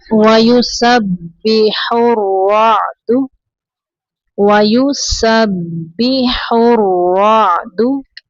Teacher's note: बा पर तशदीद है, सीन को बा के अंदर थोड़ी देर मिलाएंगे